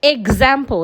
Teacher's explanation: The sound that you have after the EX is a vowel sound. So because a vowel sound is a voiced sound, the X there will sound Gz.